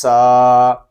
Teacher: سین کو ہم سیٹی کی ساتھ ادا کریں گے کیونکہ سین حروف صفیریہ میں سے ہے، اس میں سیٹی کی آواز بھی آئے گی